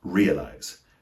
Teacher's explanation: Notice the primary stress is on the first syllable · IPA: /'rɪəlʌɪz/